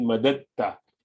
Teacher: So you drop that dal and say straight the ta, because the makhraj of ta and dal are in the same place, at the same makhraj, same exit point when you pronounce it.